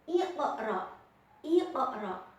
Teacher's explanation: bacanya harus dipantulkan karena huruf qaf berharokat sukun asli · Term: qalqalah sugro